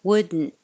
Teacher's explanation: Would, your tongue goes to the D, and then you come down.